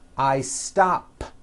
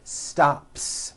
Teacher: stop ends with an unvoiced P